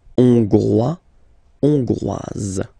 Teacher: final S not pronounced for the masculine form, and then you pronounce it here for the feminine form